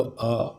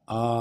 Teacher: तो ये ह्रस्व हो गया एक मात्रा अ फिर दो मात्रा आ ये दीर्घ हो गया